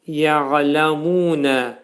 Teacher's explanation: Əvvələ ya'ləmunə, bu kəlmədə yə dilimizdəki y hərfinin məxrəci kimidir. Ayn hərfinin məxrəci boğazın ortasından çıxarılır.